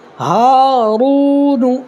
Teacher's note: یہ را کو تھوڑا پر کرنا ہے، اس لیے کہ را کے اوپر پیش آئے گا نا تو را پر ہوگا